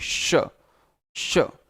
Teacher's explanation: पर एक्चुअल में इसको बोलते समय शुद्ध रूप से आपकी जिह्वा तालू पर जाकर के चिपक जाती है, तभी सीटी जैसी आवाज भी आती है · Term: तालव्य स